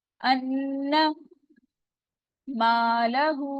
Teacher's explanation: अलिफ मद्दा हो रहा है, टू काउंट स्ट्रेच करेंगे